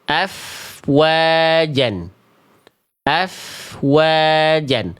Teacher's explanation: Di mana wawu dilafalkan kedua bibir dengan posisi maju seperti pengucapan huruf U. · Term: huruf wawu